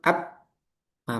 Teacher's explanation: Nah, syiddah ee sudah ya sudah ana singgung sebelumnya yaitu suara yang tertahan seperti hamzah a itu syidah. Ba ketika disukun abah macet itu namanya syiddah.